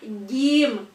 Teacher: makhrojnya yaitu adalah dari tengah lidah bertemu dengan langit-langit mulut bagian tengah pula jadi dia satu makhroj ya game ini satu mahroji dengan Shin